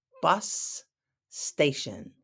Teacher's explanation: we say it quickly, bus station, it sounds like one word.